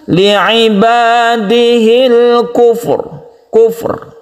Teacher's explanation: Bahkan dengan dua sukun ini, Ra masih dibaca sebagai Ra yang senyap dan merupakan Tafkhim atau tebal. · Ini langsung menuju huruf Ra karena didahului oleh Damma, jadi Ra dibaca tebal